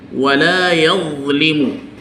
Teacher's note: he places the tip of his tongue onto the tip of his upper incisors, that is the teeth. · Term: al-dha